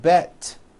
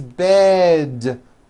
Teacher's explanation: bed has a voiced d ending it's not bet with an unvoiced T